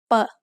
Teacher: The sound of ป อ ป ล า as an initial consonant is p, which is in the middle between a regular English B and P. We can also call this an unaspirated P.